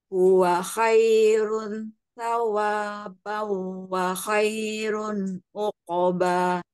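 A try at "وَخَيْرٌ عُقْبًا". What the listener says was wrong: Uqoba. Kol-kolanya tebalkan uqoba. Kemudian tadi ho, pengucapan ho-nya sempurnakan. Tebalkan ya. Huwa khoirui. Khoirung. Huwa khoirung sawabau. Wa khoirun uqoba.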